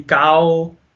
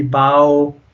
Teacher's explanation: if you'll go from ah to o, and if you put it together, it makes ow. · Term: huruf al-leen